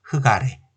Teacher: 그래서 기역이 올라가는데 우선 리을 기역에서는 음절의 끝소리 규칙이 아니라 이때는 자음군 단수를 먼저 적용을 시켜요. 그래서 리을은 탈락하고 기역만 남은 상태에서 기역이 올라가죠